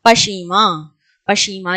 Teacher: پشیماں میں نون غنہ کے طور پر آیا ہے